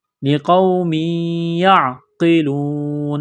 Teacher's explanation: یہاں پر آواز ناک میں چھپائیں گے، غنہ کریں گے۔ لقوم یعقلون، اس قاف کو موٹا کرنا ہے، واو ساکن سے پہلے پیش ہیں تو یہاں حروف مدہ واو ہے، 1 الف کے برابر کھینچنا ہے۔